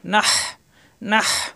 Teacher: হা কণ্ঠনালীর মাঝখানে চাপ দিয়ে নাহ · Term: লম্বা হা